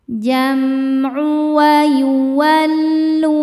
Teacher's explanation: Cara bacanya mim sukun dibaca idhar atau jelas. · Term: idhar syafawi